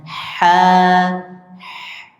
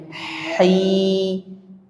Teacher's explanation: Bagaimana cara membunyikan huruf ha? Bisikkan baru tambah a-nya ha tambah i-nya hi.